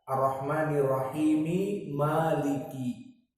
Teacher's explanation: Maka di sini diidghamkan antara Ar-Rahmanir Rahim mim dengan Maliki. Maka idgham meskipun berharokat Ar-Rahmanir Rahimi Maliki, maka dinamakan idgham al-kabir dari qiraah As-Susi an Abi Amr.